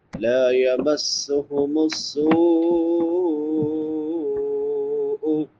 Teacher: سین کے بعد مد متصل ہے کیونکہ حمزہ اسی کلمہ میں ہے